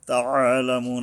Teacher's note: এই আইন যদি উচ্চারণটা ঠিক না হয় তাহলে কিন্তু আলিফ উচ্চারণ হয়ে যায়, হামজার রূপ ধারণ হয়